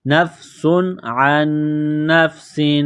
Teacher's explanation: تنوین کے بعد عین ہے، حروف حلقی ہے تو تنوین پر غنہ نہیں کریں گے